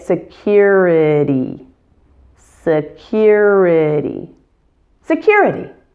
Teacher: Use a short, relaxed I for the I and a long, tense E for the ending Y.